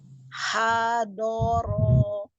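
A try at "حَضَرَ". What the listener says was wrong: Ya, masih kurang tebal bonya. Angkat pangkal lidahnya. Ha, ha, bo, bo.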